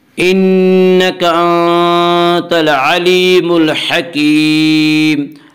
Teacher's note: آنت العلیم، العلیم میں یا مدہ، یا مدہ وہ یا جو ساکن ہو اور اس سے پہلے یا ہو، یا مدہ کو ایک الف کے برابر کھینچ کر پڑھیں گے۔ انک انت العلیم الحکیم، ہا کو واضح کر کے پڑھے، ہا کا مخرج وسط حلق ہے۔